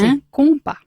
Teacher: Alors, sin el acento en la A, Vale. d'accord, y ya sabes que la S final no suena